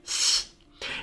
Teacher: laminal S's, which are pronounced in the front of the mouth